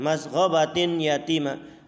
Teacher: harus dilebur tanwinnya ke hurufnya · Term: Idgham Bighunnah